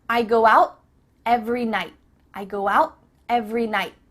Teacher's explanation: Nope. Instead, your tongue is at the top of your mouth. You're about to make the T sound, but no air goes through, so it's just stopped at the top of your mouth. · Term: cut off the T